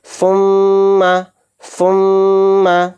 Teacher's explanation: ناک میں تھوڑی دیر آواز کو روکیں گے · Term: میم غنہ